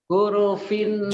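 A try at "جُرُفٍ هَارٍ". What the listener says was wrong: Ini jim ya Pak. Ini jim. Jurufin harin. Jurufin.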